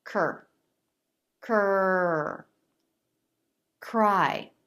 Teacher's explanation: Back of the tongue lifts to touch the soft palate as the front part of the tongue starts to lift and pull back for the R. The lips can start to flare too. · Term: CR consonant cluster